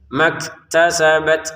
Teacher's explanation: Kasabat kafnya sama t-nya kita keluarin nafas ya. Apalagi huruf ta yang memang sukun itu sangat kentara. Sangat ketara nafasnya yang keluar itu ya.